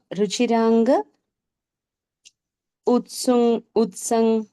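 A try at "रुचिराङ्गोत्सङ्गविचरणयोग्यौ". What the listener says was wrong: गकार ज्यादा है, इसलिए गड़बड़।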